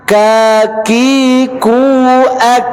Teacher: Syiddah dan hamas. Dia selain kuat, dia hamas, keluar angin. Baik, jadi harus mampu memberikan haknya, anginnya keluar.